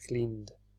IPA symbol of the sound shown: d